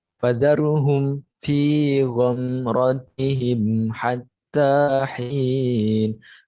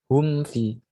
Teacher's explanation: mim sukun bertemu dengan selain huruf mim dan ba. Jadi selain dengan idgham misli dan juga ikhfa syafawi. Cara membacanya dengan jelas tanpa berdengung. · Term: idhar syafawi